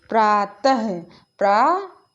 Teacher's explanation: तो आप देख पा रहे हैं कि ता के बाद हा की ध्वनि आ रही है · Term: विसर्ग